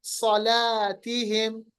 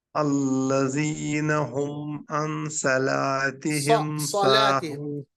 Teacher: इतबाक भी होती है, जबान का दरमियान हिस्सा ऊपर की तरफ, और ये हरूफ मुस्तालिया में भी है, हरूफ मुस्तालिया जिनको मोटा पढ़ा जाता है